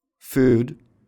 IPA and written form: fud (food)